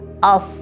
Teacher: Bu yerda tilni orqaga tortdim. Til orqaga tortilish hisobiga tilni orqasi ko'tariladi va harf yo'g'on talaffuz qilinadi. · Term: sod harfi